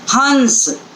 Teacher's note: पूरी जो आवाज़ है, पूरा जो स्वर है, वो स्वर नाक से निकलता दिखाई देगा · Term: अनुनासिक